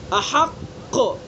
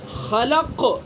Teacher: تو احق کے مقابلے میں خلق کے اندر کم قلقلہ ہو رہا ہے